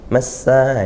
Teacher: lam ta'rifnya tidak terbaca sehingga langsung idgham ke sin. Massa itu idgham syamsiyah.